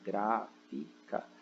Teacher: o gra, ele é a sílaba tônica, né? Gráfica.